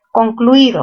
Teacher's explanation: ¿Mayor fuerza en qué sílaba? En la sílaba cluí, ¿verdad? Cerradas, cerradas se unen.